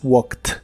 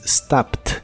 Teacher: Los verbos regulares de inglés que en el presente terminan con los sonidos que normalmente hacen las letras K, S, P, F, X, SH y CH. Cuando les agregas ed para hacerlos en pasado, esta terminación ed la pronuncias como si fuera una T. Por ejemplo, el verbo walk, que en el presente termina con el sonido y la letra K, en el pasado es walked, como si la ed fuera una T.